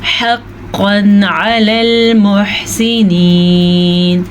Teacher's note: क़ाफ को पुर पढ़ेंगे, क़ाफ हमेशा ही पुर पढ़ा जाता है